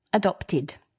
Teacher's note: because the word adopt ends in a T, which is a dental consonant, we pronounce the ed, id, adopted. And there's another word in this sentence that ends in ed, mentioned.